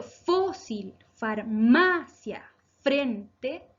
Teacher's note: fósil, farmacia, frente son palabras graves. ¿Por qué? Porque se acentúan en la penúltima sílaba.